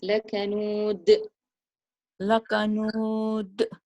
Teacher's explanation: So echo the dal. The dal sukun needs qalqala at the end of the verse